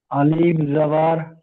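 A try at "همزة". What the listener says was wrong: আলিফ নয়, হামজা। হামজা ইয়া জাবার আই, বলেন।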